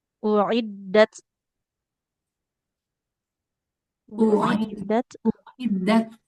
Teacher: Aliran nafas di ta-nya jangan ketinggalan.